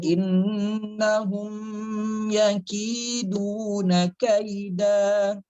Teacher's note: Innahum, haknya juga ditebalkan, mimnya jangan dipanjangkan sedikit pun, jangan dinikmati banget.